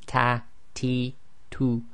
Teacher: putting the tip of the tongue where the gums meet the teeth, and this gives a slightly softer sound than in English. It's a hams letter, so if we say at, we have the continuation of the breath, and you'll have the hams as well when it's voweled.